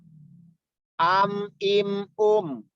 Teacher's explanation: huruf mim sifatnya jahar, sifatnya bainiyah, sifatnya istifal, infitah, dan izlaq. Izlaq itu yaitu tajam.